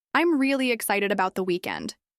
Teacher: This sentence has a falling intonation because it's a statement. Repeat after me, paying attention to how your voice moves down at the end.